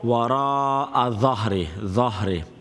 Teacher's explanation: dha is going to be full mouth because of the quality of isti'ala